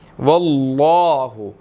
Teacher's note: لام لفظ اللہ جو ہے اس کو موٹا ادا کیا جائے گا